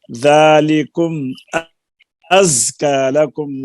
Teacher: ذال میں نرمی ہے، زا میں آگے صفت صغیر ہے، سختی سے پڑھی جائے گی